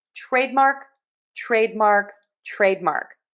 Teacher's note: So for trademark we are going to make sure that we stress syllable number one make that nice and long that vowel that long a · That is going to have less stress. We are going to have that R vowel and then end with the K.